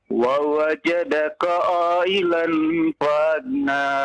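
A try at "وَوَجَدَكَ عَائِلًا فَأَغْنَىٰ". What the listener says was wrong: Panjang ya, panjang. Ya, 5 harokat.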